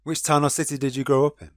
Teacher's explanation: For most types of questions, usually those beginning with who, what, why, where, when, which, and how, a person will use a falling intonation at the end of the sentence.